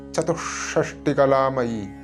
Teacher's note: ചതു കഴിഞ്ഞു വിസർഗ്ഗം വീണ്ടും ഷ ദിത്വമായിട്ട്